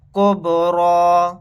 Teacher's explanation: با ساکن ہے، یہاں پر قلقلہ کر کے پڑھیں گے